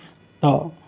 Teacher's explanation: जो हमारा जो जुबान है ऊपर तालो में लग जाता है दांत के साइड में